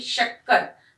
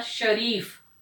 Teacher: श को बोलते समय हमको थोड़ा जोर देना पड़ता है। श पूरी जबान के साथ हमारा श, एक हवा जो है वो मुख से जोर के प्रेशर के साथ बाहर आती है। ये वाले व्यंजन ऊष्म व्यंजन, जब अब आप आगे की कक्षाओं में जाओगे तो ये जो श, स, ह, ये ऊष्म व्यंजन कहलाते हैं।